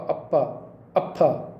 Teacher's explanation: और उपध्मानीय वर्ण, उपध्मानीय वर्ण इसे बोलते आधा विसर्ग मिश्रित प, आधा विसर्ग मिश्रित फ, पहले आधा विसर्ग आता फिर प, अप्पा, अप्फा, इस प्रकार अप्पा, अप्फा, इस प्रकार जो होते हैं उपध्मानीय बोलते हैं।